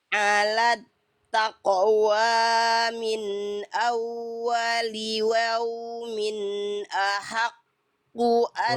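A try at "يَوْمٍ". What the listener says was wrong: Tadi bukan waumin, yaumin. Yaumin.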